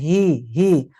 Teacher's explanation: tidak ada huruf yang keluar dari dada, keluarnya dari tenggorokan bagian bawah saja. H, ringan aja, tidak dipaksa kesannya dari dada.